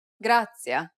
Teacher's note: this consonant sound is like a combination of a t and an s sound